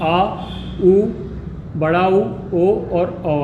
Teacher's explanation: और तीसरा जो इसका विभाजन होगा पश्च स्वर, जहाँ पर जीभ से उच्चारण स्वरों का पश्च भाग से होगा, है ना। पश्च भाग, जीभ के पश्च भाग से जिन स्वरों का उच्चारण होगा वे क्या कहलाएंगे, पश्च स्वर कहलाएंगे